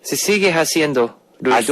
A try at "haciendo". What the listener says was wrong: haciendo. When you have an H, you don't pronounce the H. haciendo.